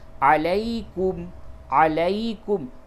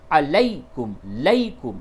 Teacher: دیکھیں یا ساکن سے قبل جب زیر ہو جب بھی تو اس یا کو یا مدہ کہتے ہیں، یعنی وہ یا کھینچ کر کے پڑھی جائے گی، اور یا ساکن سے قبل جب بھی زبر ہو تو اس یا کو یا لین کہتے ہیں، اور لین کے معنی ہوتے نرم، یعنی کہ نرمی کے ساتھ اس یا کو ادا کریں گے